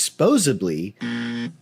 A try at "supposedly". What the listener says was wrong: Supposedly? There's no B in supposedly. Supposedly.